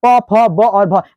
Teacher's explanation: आप बिना ओठ सटाए इसको नहीं बोल सकते। आप एक काम करो, दोनों ओठों को ऐसा तान लो, ऐसा करके तान लो, उसके बाद इसको आप बोल के दिखाओ, नहीं बोला जाएगा।